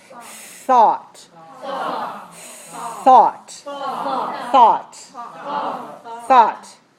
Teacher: remember the tongue th position between the upper and lower teeth make sure you let the air come out this one is voiceless